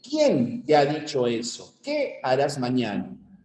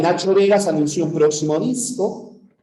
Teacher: o sea la entonación va hacia abajo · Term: cadencia